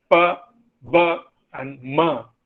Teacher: two lips you can feel it also ba ba and ma in all these three sounds the two lips come together